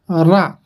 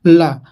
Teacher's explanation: लुंठित रा होता है, पार्श्विक होता है ला, ठीक ना। ला रा, देखिए आपकी जीभ जो अपने पीछे से जब आप अभी ला आप बोलेंगे तो आप पार्श्विक की तरफ भागेंगे, आपकी जीभ भागेगी पीछे की तरफ।